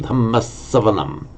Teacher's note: Now, in Dhamma Savanam, we now have a compound, and it's able to double a consonant because of the preceding short vowel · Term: double consonant